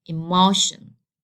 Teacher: as the rule says, I have to stress the second to last. So this is the last one, and this is the second to last.